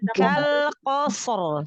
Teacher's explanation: 2 huruf isti'la tapi ro-nya juga dibaca tafkhim ya. Jadi tebal semua.